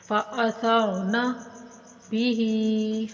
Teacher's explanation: فا، حمزہ اور تھا اور نون، ان چاروں کے اوپر زبر حرکت غیر مدہ ہے، ان کو بغیر کھینچے پڑھیں گے